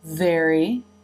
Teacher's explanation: the tongue is beginning to move into position for the R consonant sound in very, even as the jaw has dropped for the eh as in bed vowel. So the tongue does not stay down in the eh position long.